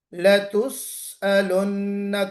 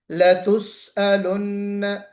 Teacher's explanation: کوشش کیجئے سین کی سیٹی بجے